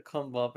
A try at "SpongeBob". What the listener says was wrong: Say the S more clearly. There's an S at the beginning of that sentence.